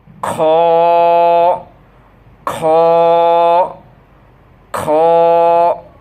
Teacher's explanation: খ উচ্চারণ কীভাবে বলছিলাম, কণ্ঠের শেষ থেকে খড়খড়া আওয়াজের সহিত মোটাভাবে, যেমন খ খ খ।